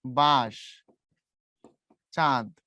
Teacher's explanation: নাকের উপরে চাপ দিয়ে উচ্চারণ করতে হয়। যেমন ধরো আমি যখন উচ্চারণ করি এই যে বাঁশ, চাঁদ, এখন তুমি যদি চন্দ্রবিন্দু না দাও, এখানে ধরো চন্দ্রবিন্দু নাই, তখন উচ্চারণ হবে বাঁশ, বাঁশ। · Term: নাকের ঝোঁক